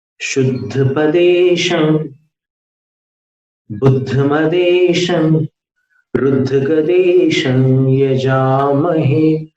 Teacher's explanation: अनुस्वार को हमने कहीं समाप्त नहीं किया, सिर्फ नासिका में रखा है।